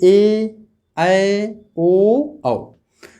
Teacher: ऐसे वर्ण जिनका उच्चारण करते समय मुख क्या होता है, आधा खुला हुआ होता है, उसे हम अर्ध विपरीत स्वर कहते हैं।